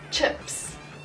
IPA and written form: ʧɪps (chips)